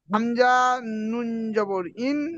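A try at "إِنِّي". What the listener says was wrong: হামজা, নুন আর হামজার টান কি সমান? তাহলে আপনি সমান করে দিচ্ছেন, পার্থক্য করেন। আগে বলেন হামজার কত আলিফ টান? হামজার টান কত আলিফ? তাহলে হামজা টান দিচ্ছেন কেন?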